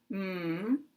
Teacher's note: m, which is made with the lips closed